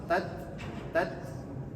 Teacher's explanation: Ta ini memiliki sifat yang namanya hames dengan syiddah